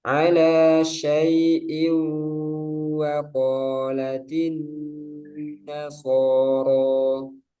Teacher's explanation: Nah, shinnya menyebar ya. Sya harus jelas.